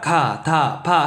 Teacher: 막았다가 터트려. 우리가 가, 다, 바 할 때는 항상 막았다가 터트리더라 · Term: 파열음